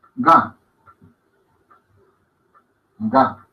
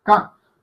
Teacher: Ven que las cuerdas vocales cuando decimos ga vibran más que cuando decimos ka. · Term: sonoras